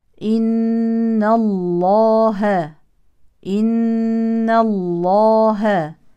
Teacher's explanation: النون المشدده فيها الغنه بمقدار حركتين · وتفخم لام اسم الجلاله لانها سبقت بفتح